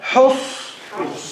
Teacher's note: Ha from the middle of the throat.